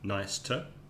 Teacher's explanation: the two in nice to meet you becomes weak so we don't say two we say ta nice ter and the meet you becomes almost like a cha